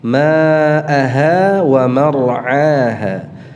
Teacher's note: ain atau hamzah? Ain, ya. Jangan dibaca dengan hamzah, ya.